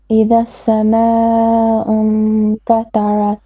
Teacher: Make your ta and your ra more heavy.